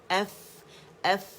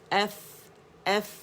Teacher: और फ़ा के लिए हम क्या करते हैं कि जो हमारा बतन शफत सुफला है, या निचले होंठ का जो पेट है गीला है, इससे उसको उठा के दांतों के एजेस पे हम लगाते हैं, ठीक है, नरमी के साथ।